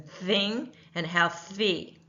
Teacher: unvoiced th sound, as in thing, and healthy